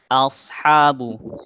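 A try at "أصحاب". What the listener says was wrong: Jadi dia pokoknya yang tebelnya shot aja. Haknya kurang. Ya, sebenarnya masih agak ngawang tebel ya. Memang untuk latihan tebal tipis nih nggak cukup sekali, 2 kali ya.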